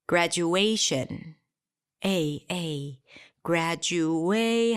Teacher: Graduate, higher in pitch, longer than the rest. Shin. And a little louder. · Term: primary stress